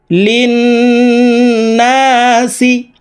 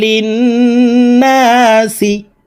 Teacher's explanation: গুন্না হরকতের বামে নুনের উপরে তাসদিদ আছে এই কারণে এই লাম তাসদিদ ওয়ালা নুনের সাথে নাকের বাঁশি থেকে গুন্না করে পড়তে হবে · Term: ওয়াজিব গুন্না